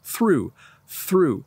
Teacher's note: I'm actually putting my tongue between my teeth